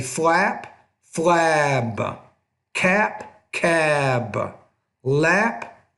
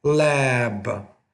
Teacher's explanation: with these voiceless consonants at the ends of words typically the vowel is a little bit shorter